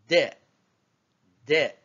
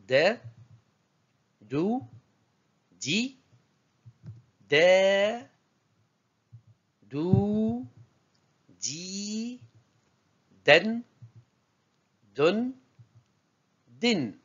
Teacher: se prononce au niveau de la pointe de la langue qui vient se fixer à l'avant du palais pour toucher légèrement les incisifs supérieurs